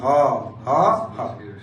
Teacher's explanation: ফুসফুস থেকে ভিতর দিয়ে একটা ধ্বনি উৎপাদন হয়, এটাকে বলে কণ্ঠ নালীয় ধ্বনি